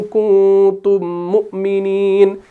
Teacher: کیونکہ میم ساکن کے بعد جب میم مشدد آ جاتا ہے تو ادغام کا قاعدہ ہو جاتا ہے